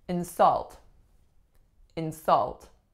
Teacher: the strongest syllable is the second telling us that this is a verb